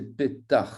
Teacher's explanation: Donc, pétach, c'est un chet guttural, donc on doit l'entendre